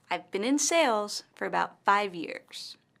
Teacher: In this sentence, the word sales and 5 years are stressed.